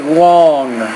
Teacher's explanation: when you say long you don't really have to pronounce the g at the end